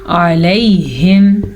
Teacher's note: علیہم آئین کے مخرج کو واضح کر کے پڑھیں گے اور آگے ہمارے پاس یا لین ہے تو اسے ہم نرمی سے پڑھیں گے.